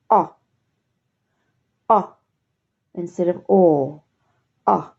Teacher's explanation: the mouth and the lips are very similar but the lips are relaxed this time you're not pursing them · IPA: /ɒ/